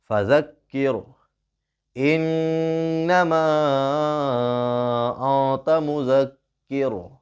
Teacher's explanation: نون ساکن کے بعد حروف اخفا میں سے تا آیا ہے، تا اس کی آواز کو ناک میں چھپا کر پڑھیں گے · یہاں پر غنہ ہوگا، نون کے اوپر تشدید ہے